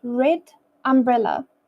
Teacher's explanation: the D in red connects smoothly to the uh in umbrella